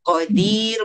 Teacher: Qadir boleh baca panjang sebab dia mad alif disukun